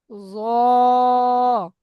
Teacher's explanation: জিভের আগা সামনের উপরে দুই দাঁতের আগার সাথে লাগান